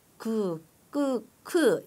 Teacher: 그, 끄, 크 이거는 점점 가면서 된소리와 파열음이 나오는 거죠